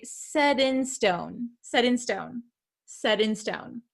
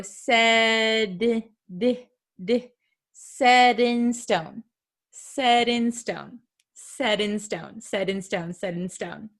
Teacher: have a t however the American tea is quite tricky so sometimes it is something called a flap T it sounds like a soft D sound